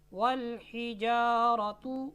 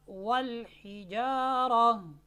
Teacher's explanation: کلمہ کے آخر میں اگر آپ کو گول تا نظر آتی ہے تو وہ حالت وقف میں ہا ساکن سے بدل جاتی ہے